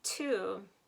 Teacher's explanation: - we'll start with - when I say the word to my very tip of my tongue is almost kind of touching the back of my teeth but a little bit higher like at that point at the roof of your mouth where